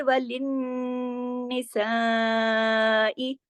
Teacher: नून पे तशदीद है, नून पे गुन्ना होगा ।